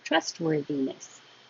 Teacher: And then trustworthiness, you don't have to release the T. Just hold your tongue in the T position to stop the airflow before the W.